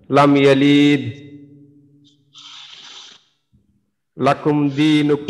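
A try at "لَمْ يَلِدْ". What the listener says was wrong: ইয়ালিদ এটা একটু টান দিয়েছেন যে এখানে কি তা। আচ্ছা আচ্ছা, লাম ইয়ালিদ, লিদ এখানে একটু টান হয়েছে, টানটা কেন হয়েছে? এখানে কি টান হবে?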